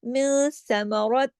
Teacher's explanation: نون ساکن کے بعد سا آیا تو ہم نے یہاں اخفا کرنا ہے۔